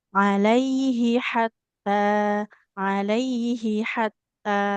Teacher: Alaihi H-nya di pangkal tenggorokan. Hatta h-nya di tengah tenggorokan. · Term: beda makhraj